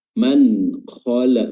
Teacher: dibaca jelas tanpa ditahan dan tanpa dimasukkan atau tanpa samar-samar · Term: izhar